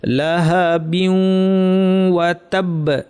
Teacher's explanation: বিউ একটু নাকি করে পড়ব, তারপর ওয়া বলার সময় নাক শেষ,